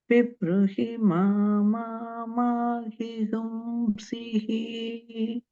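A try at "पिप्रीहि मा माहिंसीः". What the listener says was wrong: Second time you went back to Rasva on the Sihi. So just keep that one in mind.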